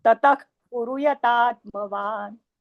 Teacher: हा, विसर्गाचा खच. हा, उच्चार ख सारखा. ख सारखा, अर्ध्या ख